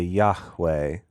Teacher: That was addressed specifically to me, saying that when I say the word Yahweh, that I will often put a Yahweh. I'll put a little aspiration on the H.